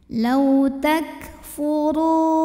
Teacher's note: Huruf ra dibunyikan secara tafkhim sebab berbaris dhammah. Maka cara bacanya ditebalkan.